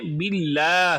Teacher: یہ جو ہا ہے اس کو حلق کے نیچے والے حصے سے ادا کریں گے، باللہ ہی پڑھیں گے، باللہ ہی نہیں بنائیں گے۔